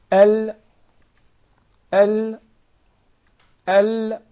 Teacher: We notice it comes from the anterior 1/3 of the side of the tongue until the sides end at the tip, from here till here. · we find the Lam, its pronunciation is easier from the right side of the tongue.